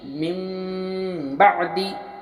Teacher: नून साकिन के बाद बा आने की बिना पर हम नून साकिन को मीम से बदल कर गुन्ना और इख्फ़ा के साथ पढ़ेंगे। मिन बादी, मीम मीम ज़ेर मीम, बा आइन ज़बर बा और दाल ज़ेर दी, मिन बादी। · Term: इक़लाब